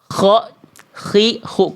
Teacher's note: dilafalkan dari tenggorokan paling atas atau bagian terluar dari tenggorokan kita. Di mana itu?